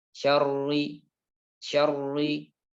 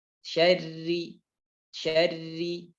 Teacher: Tebal. Yaitu dengan mengangkat pangkal lidah. Maka akan menjadi tebal. Syarri. Pangkal lidah diturunkan.